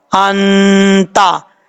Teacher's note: یہاں نون ساکن ہے، ایک الف کی مقدار غنہ کریں گے، نون ساکن کا اخفا ہوگا